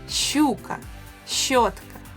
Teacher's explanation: It is a long and soft sh. And to practice it, first try saying it with e afterwards.